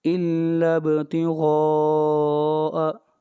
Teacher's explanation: اگلی آیت الا ابتغاء، با کے اوپر قلقلہ ہوگا، غین کو موٹا پڑھا جائے گا اور یہ مد متصل ہے، اس کو 3 الف کے برابر کھینچ کر پڑھا جائے گا